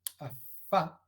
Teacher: Esta es labio dental, eso creo que es muy evidente, al producir a fa. El labio inferior entra en contacto con los incisivos superiores, a fa, y es sorda.